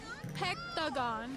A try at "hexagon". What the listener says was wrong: She said hexagon, you're saying hectagon.